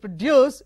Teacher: So if it stresses on the first syllable, it is a noun, and stresses on the second syllable, produce, it is a verb.